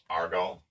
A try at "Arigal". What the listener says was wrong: Arigal. There's 3 syllables there.